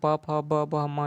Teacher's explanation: तो ये हो गया ओष्ठ व्यंजन, है ना, ओठ का टच हो रहा है मतलब ओष्ठ व्यंजन ही होगा